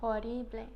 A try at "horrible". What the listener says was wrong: Horrible. You do not pronounce the H. The H is silent.